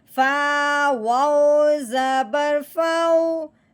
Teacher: اب ہم نے کیا کرنا ہے، اس واؤ کو بھی لین کے ساتھ جاری کرنا ہے، یعنی کہ واؤ ساکن پہ بھی لین کا قاعدہ جاری ہوگا۔ جیسے کہ فا کو واؤ ساکن کے ساتھ ملائیں گے اور نرمی کے ساتھ پڑھا جائے گا، جھٹکا لگاتے ہوئے کھینچتے ہوئے ہرگز نہیں پڑھیں گے۔ فا واؤ زبر فاؤ، نہ تو فو لمبا کرنا ہے یا فو جھٹکا بھی نہیں لگانا، ٹھیک ہے۔